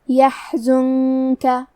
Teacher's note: پھر یہاں نون ساکن ہے اور اس کے بعد حرف الکاف ہے. کاف حروف الاخفاء میں سے ہے تو ہم یہ حکم کو غنہ کے ساتھ ادا کریں گے